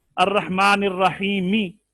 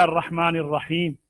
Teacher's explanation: अर्रहमानिर रहीमी जेर थी, साकिन कर दिया अर्रहमानिर रहीम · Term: वक्फ बिल इस्कान